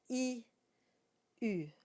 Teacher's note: The tongue stays in the same place, and it's quite forward.